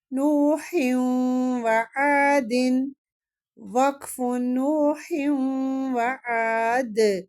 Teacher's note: نوح وعاد وقف نوح وعاد، دال پہ قلقلہ ہوگا، دال ساکن ہو جائے گا وقف کی صورت میں